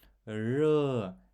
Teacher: Р деп жуан тілді дірілдетіп дыбысты шығармаймыз. Р деп әшейін жіңішке түрде айтамыз.